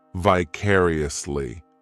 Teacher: This adverb has 5 syllables, and the stress is on that second syllable, vicariously. The third syllable, it's like that letter I just has that E sound, and the fourth syllable has the schwa